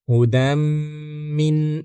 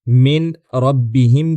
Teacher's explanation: नून बाद वाले हर्फ में मुदगम या जम हो जाता है या यूं कहिए कि बिल्कुल मिल जाता है। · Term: इदगाम